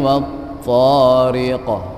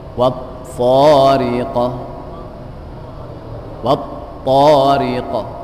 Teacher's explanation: Ketika diucapkan di akhir, maka terdengar suara tambahan. Nah, suara tambahan ini yang lebih dikenal dengan istilah qalqalah.